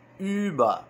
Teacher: a gente vai fazer a boca do U e vai pronunciar I. Ü. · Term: umlaut